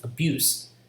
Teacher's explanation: So it should be having two consonants, bu, ba, and ya, buse. And the ending syllable is s. It's voiceless, abuse. And because the syllable, the stress is on the second syllable, abuse, it's not abuse.